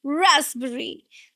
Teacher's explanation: Again the stress is on the first just like strawberry.